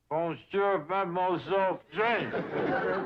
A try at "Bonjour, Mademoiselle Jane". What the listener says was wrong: That's very good. Except for the mwah sound. Must be soft. Mwah. Watch my lips closely. Mwah.